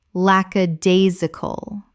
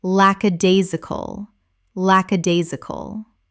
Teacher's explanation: Five syllables with the stress on the third,